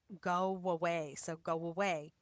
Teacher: if one word ends with a vowel sound and the next word begins with a vowel sound, like go and away, we connect those two by inserting a w sound to glide between go away.